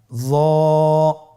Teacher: জিহ্বার আগা, সামনের উপরের দুই দাঁতের আগার সঙ্গে লাগিয়ে উচ্চারিত।